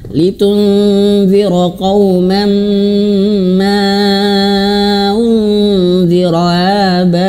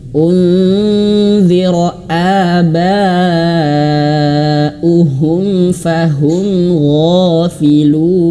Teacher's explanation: Hamzah itu harus jelas ya karena dia memiliki sifat syiddah dan jahr. Terputusnya suara dan terputusnya angin. A a seolah-olah kalau misalkan kita tulis huruf latin Indonesia itu ada komanya sebelumnya a gitu ya.